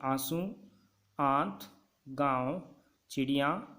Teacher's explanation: अनुनासिक के उच्चारण में नाक से बहुत कम सांस निकलती है और मुंह से अधिक निकलती है